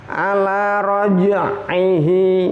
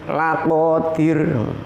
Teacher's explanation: Seperti ada bayang-bayangnya jim. Jadi jimnya seakan-akan double, ada jim dua. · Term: qalqalah sughra